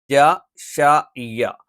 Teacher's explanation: നാവിൻറെ മധ്യഭാഗം മേലെ അണ്ണാക്കിൽ സ്പർശിച്ചുകൊണ്ടാണ് ജഷാഇയ ഈ മൂന്ന് അക്ഷരങ്ങളും നമ്മൾ ഉച്ചരിക്കുന്നത്